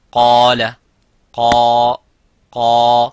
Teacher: so the alif is mufakham, it is a heavy because of the qaf. So whenever the letter is heavy, you make the letter alif qaf, the letter alif of mad heavy.